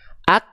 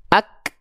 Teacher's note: yang tertunaikan adalah sifat syiddahnya dulu tertahan suaranya dulu perhatikan ak Tuh berhenti dulu kan baru keluar perecikan nafasnya ak